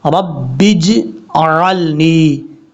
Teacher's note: आवाज़ लौटेगी ज़रूर इस हर्फ में, जीम में कलकला ज़रूर करेंगे, लेकिन इतना भी कलकला ना हो कि जीम के ऊपर ज़बर पढ़ा जा रहा है